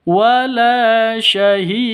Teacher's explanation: maka hukum Qalqalah berlaku harus dipantulkan ke huruf dalnya Qalqalah Apa karena ada di akhir kalimat maka disebut dengan Qalqalah · Karena dal ini termasuk hurufnya qalqalah jika sukun. Ini berubah menjadi sukun, maka hukum qalqalah berlaku. Harus dipantulkan ke huruf dalnya. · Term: Qalqalah Kubro, qalqalah kubra